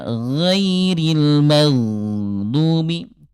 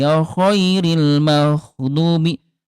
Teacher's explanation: Ini huruf ghain tidak ada udara, sementara kalau kho dia ada udara, dia hams ya. Nah ini ay bunda kalau huruf ghain ada udara nanti akan tertukar dengan kho.